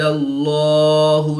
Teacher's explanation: جلالت اللہ عز و جل کے لام سے پہلے لام پر زبر ہے تو اس لیے اس لام کو پر یعنی موٹا پڑھیں گے